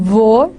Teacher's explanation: So there was voicing of fricatives that was allowed at that time.